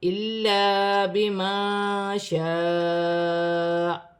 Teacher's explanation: زبر گر جائے گی اور حمزہ ساکن ہو جائے گی تھوڑا جھٹکے کے ساتھ